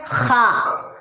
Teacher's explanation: आखिरी हलक से खा अदा होता है